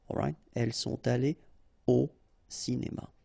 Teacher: So, no liaison after your participe passé here.